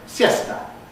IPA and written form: ˈsjesta (siesta)